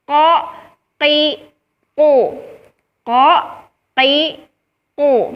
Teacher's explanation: ketika kita mengucapkan huruf qaf itu tidak ada hembusan udara yang keluar · Karena naiknya pangkal lidah, kemudian suara atau udara berbenturan dengan langit-langit atas, maka jadilah huruf qaf itu huruf yang tebal. Jadi ketika kita mengucapkan huruf qaf itu terdengar tebal karena pangkal lidahnya yang naik. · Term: al-jahr